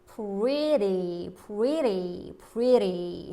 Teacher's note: 했으니까 여기선 단모음 아이 역할을 하고 있습니다. 그래서 모음 소리와 모음 소리 사이에서 리을로 소리 바뀌었어요